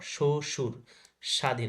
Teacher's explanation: শব্দের আদিতে ব ফলার উচ্চারণ হয় না